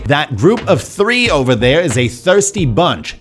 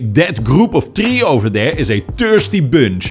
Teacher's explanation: the th becomes a t or a d